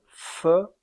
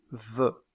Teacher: Aussi, appelle-t-on ces deux constricives des labiodentales. La consonne fe est une consonne sourde tandis que la consonne ve est une consonne sonore.